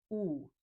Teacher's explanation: When you say u, your tongue is back, lips are rounded like a small circle.